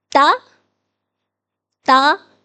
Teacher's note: زبان تالو کے ساتھ لگ رہی ہے اور زبان کی نوک اوپر والے دانتوں کی بیک سائڈ سے لگ رہی ہے. تا دا تو تو تو نہیں کہنا.